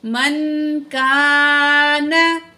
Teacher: काफ अलिफ ज़बर का, अलिफ खाली है, माकबल ज़बर है, अलिफ मद है, यहाँ दो अलिफ के बराबर खींच के पढ़ेंगे